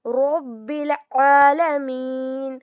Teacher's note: عین کی آواز جو ہے یہ حروف حلقی ہے تو حلق سے اس کی آواز آئے گی